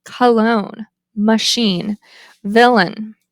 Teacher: The tongue height is mid, central, unrounded, and lax. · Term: schwa